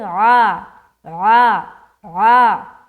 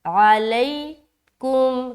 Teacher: عین بھی نکالنا ہے، ایسا نہیں کہ عین حمزہ بن جائے